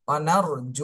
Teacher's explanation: ওয়ানার র সাকিন ডাইনে জবর র মোটা করে পড়তে হবে